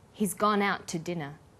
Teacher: The t sound is pronounced only once.